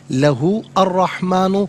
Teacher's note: ہا کے اوپر پیش ہے، اس سے الرحمن کے را کے ساتھ ملائیں گے، درمیان میں سے الف یعنی حمزہ کو حذف کیا جائے گا۔ را حرف شمسیہ ہے تو یہاں پر را کی آواز ہوگی، لام کی آواز نہیں ہوگی۔